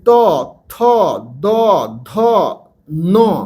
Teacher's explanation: এটাকে দন্তন্য বলে এগুলো সবগুলো কিন্তু দাঁতের কাছে উচ্চারণ হয় মানে উচ্চারণ করবার সময় আমাদের জীব দাঁতের কাছে লাগে